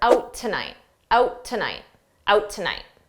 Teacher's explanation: is quite clear notice how we can combine out tonight together when I say out I'm not going to pronounce that t